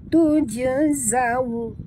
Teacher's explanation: waw sifatnya lin muncungkan mulut